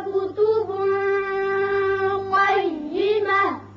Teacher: کتب یا تنوین کے بعد قوف ہے جو حروف اخفا میں سے ہے، یہاں اخفا کریں گے